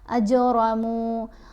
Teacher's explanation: قلقلہ کا مطلب ہے ہلانا. یہاں اجرمو جیم کی آواز کو ہم ہلا کر پڑھیں گے، اسموتھ آواز نہیں ہوگی، ایسے جیسے ڈبل ہوتی ہوئی پلٹ کر آتی ہوئی آواز.